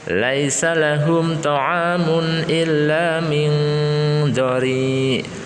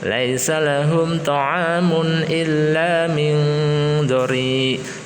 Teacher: Min ikhfa hakiki, samar-samar mendengung 3 harokat atau lebih ya.